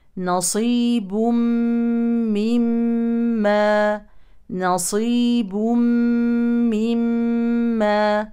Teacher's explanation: تنوين يليه ميم يعني ادغام كامل بغنه نتج عنه ميم مشدده فيها غنه حركتين وهذه الميم اصلا مشدده كذلك فيها غنه حركتين اذا ننتبه عند